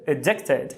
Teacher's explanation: Quando o A estiver em posição átona fraca, vai ser um schwazinho, geralmente.